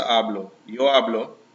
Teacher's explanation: Stress is on the first part there.